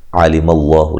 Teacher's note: لفظ اللہ کو موٹا ادا کرنے سے پہلے زبر ہے